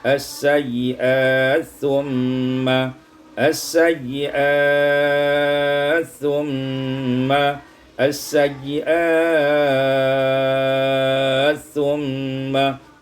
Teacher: as-sayyiati thumma idghamut ta' fi sa, diidghamkan ta' pada sa menjadi as-sayyiat thumma as-sayyiat thumma as-sayyiat thumma, qasar, tawassut dan isba'.